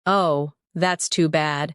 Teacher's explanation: Oh, that's too bad. with soft, low tone.